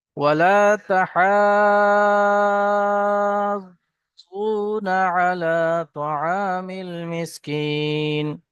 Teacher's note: তো হরুফে মাদ্দাই হলো এটা। মাদ্দার পরে একই শব্দের মধ্যে তাসদিদ এসছে, তাই এটা মাদ্দে লাজিম, একটু বেশি টান হবে।